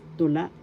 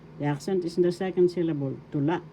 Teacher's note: Tula. The second syllable la has the accent. First syllable tu, second syllable la.